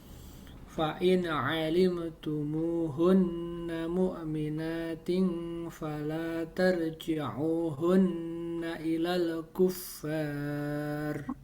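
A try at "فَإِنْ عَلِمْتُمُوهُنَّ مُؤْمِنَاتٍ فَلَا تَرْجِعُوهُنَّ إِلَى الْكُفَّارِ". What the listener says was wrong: tadi kayaknya non sukunnya agak mantul. Enggak boleh mantul.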